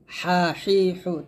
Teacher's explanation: জিম দুই জবর জান, জিম দুই জের জিন, জিম দুই পেশ জুন, জান জিন জুন। হা, হাটা হলকের মাঝখান থেকে চাপ দিয়ে বলবেন, হা এরকম চিকন করে হরকত হবে।